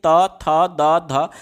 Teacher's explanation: इसी प्रकार से त बोल करके देखिए, त, थ, द, ध, आपकी जिह्वा का अगला भाग जो है वो आपके दांत के निचले हिस्से को टच कर रहा होगा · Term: त वर्ग